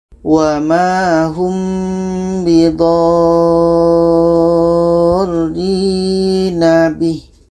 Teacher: Dha ini kita panjangkan 6 harakat baru masuk kepada ro yang ada tasydidnya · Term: mad lazim kilmi mutsaqqal